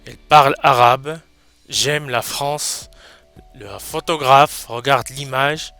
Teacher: Alors là, je n'ai pas prononcé le E final parce qu'il est muet. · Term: E muet